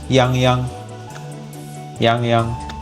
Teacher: the A on Yang Yang is pronounced as ah